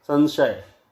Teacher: लोग इन तीनों सा में कोई भेद नहीं कर पाते हैं, जबकि एक दंत्य है, दूसरा तालव्य है और तीसरा मूर्धन्य है। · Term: सकार, शकार, शकार